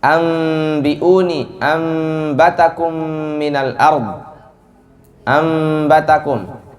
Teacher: Jadi nunnya itu atau tanwin itu dirubah menjadi mim